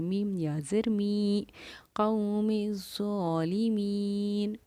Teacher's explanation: یا ساکن سے پہلے کیونکہ زیر ہے، یا ساکن سے پہلے زیر ہو تو یا ہماری حروف مدہ بن جاتی ہے، اور میم یا زر می کو ہم ایک الف کی مقدار کے برابر کھینچ کر پڑھیں گے. میم یا زر می قوم الظالمین.